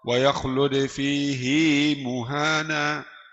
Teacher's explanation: Imam Hafs panjangkan suara ha. Pakai ya.